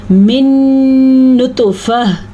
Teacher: اب یہاں پہ ہونٹ تو نہیں بند ہوتے لیکن زبان کا جو سرا ہے اب کچھ حصے کے ساتھ اوپر لگتا ہے تو نون کا غنہ ادا ہوتا ہے